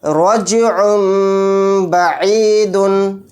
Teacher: عین کو چھوٹے میم میں ملا کر غنہ اور اخفا کے ساتھ پڑھیں گے